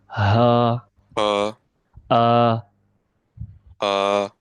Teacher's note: So it is pronounced from the throat, from the bottom part of your throat. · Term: hamza and ha